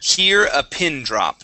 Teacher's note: instead of saying pin and using an e sound we want to use a short I